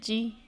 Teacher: زبان کے بیچ کے حصے سے جیم ادا ہوتا ہے۔ جیم پر زیر ہے، نہیں کھینچیں گے۔